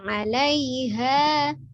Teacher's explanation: Ha dari tenggorokan bawah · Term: Ha besar